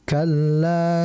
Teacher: la di situ ada lam alif ya dibaca panjang dua harakat